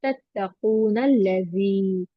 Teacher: तो अगर हम इसको मिलाकर पढ़ते तो तत्तकून लजी। ओके, फिर हम यहाँ सिर्फ टू ही काउंट बंद करते हैं और नून को लाम से मिलाकर पढ़ते हैं